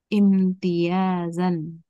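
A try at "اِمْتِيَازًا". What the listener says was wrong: alif diganti. Alif diganti apa? Ya, diganti ya. Imti, imtiyazan.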